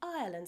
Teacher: the combination of letters giving an I sound, which sounds more like oi. Even the name of the country, Ireland, sounds like a cross between Ireland and Oiland.